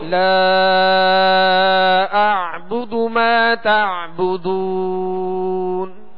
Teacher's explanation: لا اعبد، اب حمزہ عین زبر آخر میں عین کی جو ہے وہ آواز واضح کریں گے، اس کو جھٹکا نہیں پڑھیں گے بلکہ عین پڑھیں گے